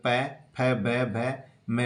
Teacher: दोनों होठों की सहायता से उच्चारित होने के कारण प वर्ग के वर्ण ओष्ठ्य कहलाते हैं